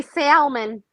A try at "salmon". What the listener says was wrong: No L is silent, baby.